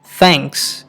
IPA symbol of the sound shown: θ